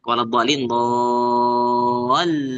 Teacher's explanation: Nabr itu suara tekanan pada lam ketika membaca do panjang ketemu lam tasdid ya kan. Itu namanya mad lazim.